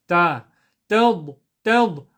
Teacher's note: ta is a very simple letter to pronounce, tip of the tongue behind the front two teeth.